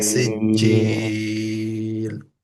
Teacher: সিজ্জিলের ক্ষেত্রে জিম যদিও কলকলা লেটার সাদ্দা থাকার কারণে কলকলা হচ্ছে না